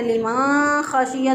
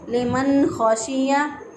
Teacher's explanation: नून साकिन की आवाज़ को ज़ाहिर करके पढ़ेंगे। तो अगर कोई इसको पढ़ दे लिमा खाशिया तो गलत हो जाएगा।